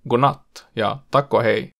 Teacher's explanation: Normaalissa ruotsinkielisessä puheessa viimeinen konsonantti poistetaan monesti kun sanaa ei korosteta. Tämä tapahtuu usein konsonanteille <d> ja <g>, tai tosi yleisille sanoille, kuten 'och' ja 'till'. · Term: konsonanttien poiston